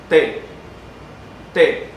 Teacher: Y hay idiomas que tienen bien claro cuando uno pronuncia, dependiendo de la posición, T con el ápice de la lengua detrás de los dientes, T y T, T con el ápice de la lengua en los alveolos